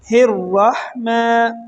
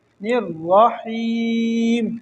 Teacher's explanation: را کو موٹا پڑھیں گے، ہا کو باریک پڑھیں گے